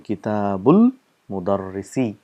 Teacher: This is hamzatul wasl, so we don't pronounce the sound because there's a word coming in front of it. So we say kitabul mudarrisi.